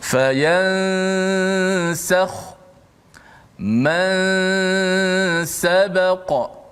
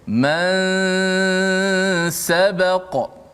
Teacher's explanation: Contoh, fayansakhu, masa sebut ya saja, habis ya saja, lidah kita dah pergi kepada makhraj huruf selepas nun tu, huruf sin lah. Okey, dan nun tu dikekalkan pada gunnah khayshum saja.